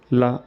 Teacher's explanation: पार्श्विक का अर्थ होता है बगल वाला हिस्सा। ला बोलते समय जीभ हवा को रास्ता देने के लिए बीच से ऊपर उठा देता है और हवा को साइड से निकालती है। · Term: पार्श्विक व्यंजन